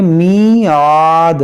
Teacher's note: عین کو حلق سے ادا کریں گے